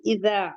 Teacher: اذا حمزہ حلقی ہے، زال اس کو اس کے مخرج سے ادا کرنا ہے، ہمیں زال کہنا ہے، جو ہماری ٹپ آف دا ٹنگ ہے وہ فرنٹ ٹیتھ کے کنارے سے لگے گی۔ اذا الف مدہ ہے، 2 کاؤنٹ پڑھیں گے۔